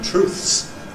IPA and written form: truːθs (truths)